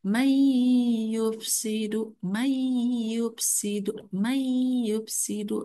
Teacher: memasukkan sebutan nun mati atau tanwin ke dalam huruf selepasnya dan dibaca secara idgham beserta dengung. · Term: idgham bigunah